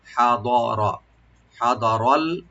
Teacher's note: হাদারা হা open রাখবেন, দটাকে একটু deep করবেন আর রাটাকে ডিপ করে পড়তে হবে। হা দ র, হা দ রল, লামের সাথে মিলাবেন।